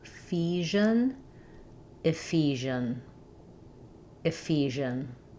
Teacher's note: The first E says an I sound. And then letters SI say the zh sound, like in measure